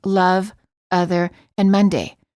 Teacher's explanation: it's the neutral sound uh as in love other and Monday